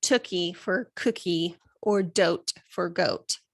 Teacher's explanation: water or baba for bottle and then velar fronting is when instead of saying the k and the g sound which are in the back of the throat they are using a front sound